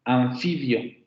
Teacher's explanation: en la palabra anfibio, tenemos ese fonema labiodental. Anfibio, porque después de ese fonema tenemos una labiodental, ¿no? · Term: labiodental nasal sonora